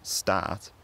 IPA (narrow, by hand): sta:t̪ᶿ